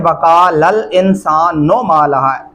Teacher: इंसानु नून पे नू पढ़ेंगे, नो नहीं करना